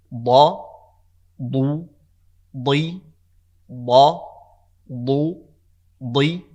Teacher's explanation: there's um a pressure that i'm creating between both sides of the tongue · the front of the tongue and the tip of the tongue touch the edge of the gums over here at the very front and so the way it's · tongue you can take one side or the other side but the pressure arises from the sides of the tongue